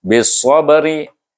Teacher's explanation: Ba mati, ba adalah huruf qalqalah. Maka kita baca dia dengan qalqalah sughra.